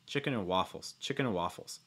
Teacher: notice also too that your stress is going to be on waffles here